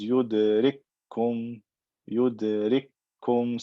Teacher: See, I jump over this kaf and I just go to this kaf with shadda. It has become one kaf with shadda. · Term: idgham saghir